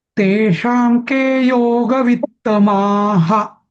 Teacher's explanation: हा म्हणजे विसर्गाचा हा म्हणायला पाहिजे